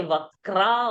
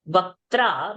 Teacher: So not to say vakra over there, vaktra, one T has to come out.